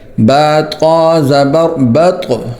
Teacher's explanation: وقفن بعد، بطق زبر بطق، تو بھی حروف قلقلہ میں سے ہے، تو اس کو بط نہیں پڑھیں گے بلکہ موٹا بھی کریں گے اور قلقلہ بھی کریں گے